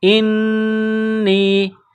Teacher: حمزہ کو نون کے ساتھ پلس کرنا ہے، آواز ناک میں چھپانی ہے، غنہ کرنا ہے۔